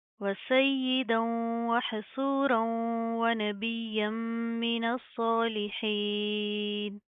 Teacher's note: सौद को प्रॉपर मुंह को पुर करके पढ़ेंगे, मोटा पढ़ेंगे। हा की आवाज़ को आपने प्रॉपर वाज़ह करना, ठीक है।